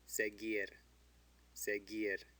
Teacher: The U doesn't have an umlaut. It's between a G and an I, so it's silent. It's not seguir.